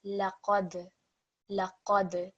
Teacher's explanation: The dal is slightly vibrated when you land on that letter. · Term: slight jerking sound